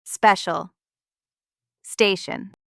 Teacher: Here, T or C becomes a soft /ʃ/, and the I becomes /ə/ sound. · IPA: /ʃən/ and /ʃəl/